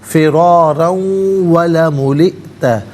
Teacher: حمزہ ساکن ہے، جھٹکے کے ساتھ پڑھا جائے گا